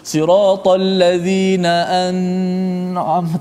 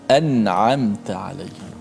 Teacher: baca dengan jelaskan nun mati tanpa boleh kita memanjangkan. Tak boleh baca siratal ladzina an'am, tak boleh. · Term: izhar halqi